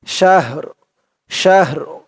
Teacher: র আওয়াজটা লাস্ট একটু ভাসবে